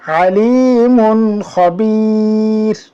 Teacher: এখানেও যদি দেখি তানভিনের বামে ইজহারের 6 হরফ থেকে খ আসলো, আমাদেরকে গুন্না ছাড়া স্পষ্ট করে পড়তে হবে।